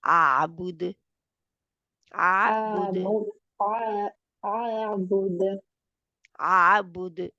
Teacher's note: آواز نکلنی چاہیے اور سنائی بھی دے کہ دال کے اوپر ہم کلکلا کر رہے ہیں